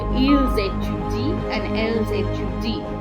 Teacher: The sound is Z because S plus vowel is a Z sound.